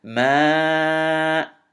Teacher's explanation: notice I extended the Mim Fatha and then Alif Mad to 4 counts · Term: extend your mud